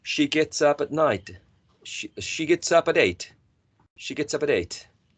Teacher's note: It's all connected. It's all linked. Vowel to consonant, as in the case of she gets, or consonant to vowel sound, and as in the case of gets up.